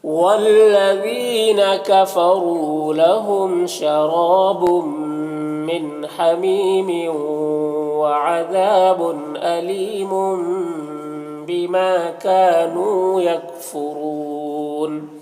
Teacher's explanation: تنوین کو میم سے بدل کر غنہ اور اخفا کے ساتھ میں پڑھیں گے، اس کو اقلاب کہتے ہیں